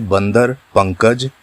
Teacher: अनुस्वार का चिन्ह है बिंदु। अनुस्वार के उच्चारण में हवा केवल नाक से निकलती है